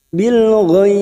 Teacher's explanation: ujungnya kita pantulkan karena terdapat huruf ba yang mati di akhir kalimat dan dibaca wakaf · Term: qalqalah kubrah